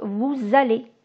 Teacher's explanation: Et j'ai le son Z qui fait la liaison